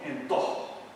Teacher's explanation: Por ejemplo, el canario confunde la A con la E.